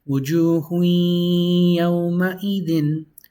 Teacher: when there's a ya following a tanween, you actually don't pronounce the noon